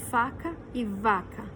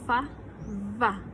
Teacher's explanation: Alguns pontos articulatórios são iguais, só que o traço de sonoridade é diferente.